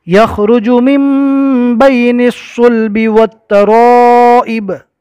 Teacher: نون ساکن کو میم سے بدل کر گنہ کے ساتھ پڑھنا ہے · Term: اقلاب